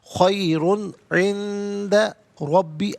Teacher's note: نون ساکن کے بعد دال ہے، حرف اخفا ہے تو نون ساکن کو اخفا کے ساتھ پڑھیں گے